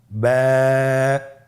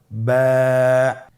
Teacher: বা হরফে টান হবে, এক আলিফ টান।